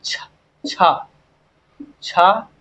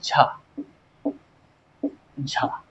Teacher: फिर समझिए, जिन व्यंजनों के उच्चारण में एक उच्चारण अवयव दूसरे उच्चारण अवयव को इस प्रकार से स्पर्श करता है कि वायु थोड़ा संघर्ष के साथ निकलती है, उन्हें स्पर्श संघर्षी व्यंजन कहते हैं।